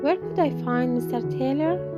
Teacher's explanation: we may use a full rise to sound more polite even if it's a wh questions